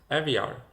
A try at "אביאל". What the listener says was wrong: Okay, so in Hebrew you say Aviel, in English Aviel. You change the primary stress. While in Hebrew it's Aviel, the primary stress is at the end, I wouldn't change it to Aviel.